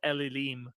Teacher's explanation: the n Sound assimilates and you get a doubling of the L Sound